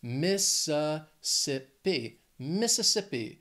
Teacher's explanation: This state has four syllables. The stress is on that third syllable. That second one's just that schwa. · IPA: /ˌmɪs əˈsɪp i/